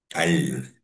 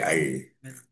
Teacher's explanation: Kita gerak je lah lidah kan. Jadi mengeluarkan suara dan udara serta menggerakkan hujung lidah dengan menekan lelangit ya. Menekan lelangit. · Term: makhraj lam